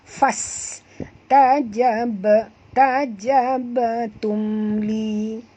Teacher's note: fas bunyikan safir pada huruf sin